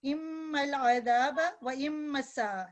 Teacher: یہ میم مشدد ہے، اس پہ 2 سیکنڈ لمبا کرنا گنہ کے ساتھ. ناک سے آواز آتی